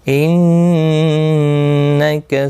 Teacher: انک نون مشدد پر غنہ ہوگا